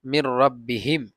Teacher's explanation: এই যে নুন সাকিনের পরে রা আসছে, ইদগামে বাগুন্নার হরফ, রালাম, এই দুইটি থেকে একটি আসছে র, এটা হবে এই ইদগামে বেলাগুন্না, বাগুন্না না, সরি বেলাগুন্না হবে। নুন সাকিনের পরে রা আসলে বেলাগুন্না, রালাম আসলে বেলাগুন্না, এটাকে আমরা গুন্না ছাড়া পড়বো